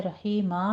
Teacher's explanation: हा की आवाज़ वस्ते हलक से अदा करते हुए बारीक अदा करेंगे